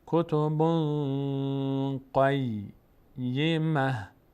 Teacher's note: کتبن صدا میره در بینی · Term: اخفا